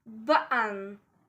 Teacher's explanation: In British English, we often take T sound away because we often use gloal stop. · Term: glottle stop